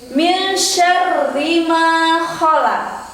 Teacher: ada nun mati bertemu dengan huruf shin, dibaca samar, namanya ikhfa.